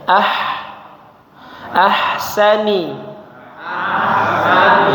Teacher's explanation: huruf ha mengalir suaranya ya udaranya ya